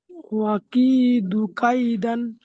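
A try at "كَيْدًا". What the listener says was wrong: এবারে আপনার কেমন করে পড়তে হবে, আপনি তো বানান করলেন ওয়া, দাল আলিফ দু জাবার দান। দাঁড়াতে হলে এক জাবারকে বাদ দিয়ে এক আলিফ পরিমাণ দাঁড়াতে হবে, এক আলিফ পরিমাণ টান দিয়ে দাঁড়াতে হবে। দাল জাবার দা নয়, দাল আলিফ জাবার দা। হুম, এক আলিফ টান দেন। ওয়া আকিদু কাইদা।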